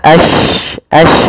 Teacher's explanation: Tafasyi adalah sifat huruf yang dimana menyebarnya suara shin di dalam mulut. Intisyarus saut.